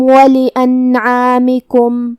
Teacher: عین کی ادائیگی حلق کے درمیان والے حصے سے ہے تو حرف العین کو ہم وہیں سے پڑھیں گے.